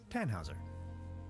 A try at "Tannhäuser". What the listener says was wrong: We'd pronounce it Tannhäuser with an umlaut.